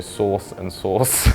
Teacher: like source source we definitely gotta pronounce the r in scotland we don't pronounce the r obviously so when we say the second source it just sounds the same as the first source